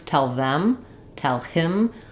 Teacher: if I'm stressing on either of these words tell them tell him I'm not going to drop the TH or the H